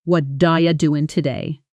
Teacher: Are you collapses into IA and doing loses its full G ending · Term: connected speech